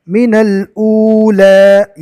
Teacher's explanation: یہاں پر واو مدہ ہوگا، ایک الف کے برابر کھینچ کر پڑھیں گے